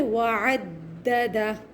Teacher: پہلی والی دال پر سختی کریں گے اس لیے کہ اس پر تشدید ہے